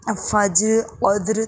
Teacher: اور فجر، قدر تمام جگہوں پر را کو موٹا پڑھا جائے گا وقف کی صورت میں۔ اگر آپ نہیں رک رہے تو یوں ہی پڑھیں گے فجری۔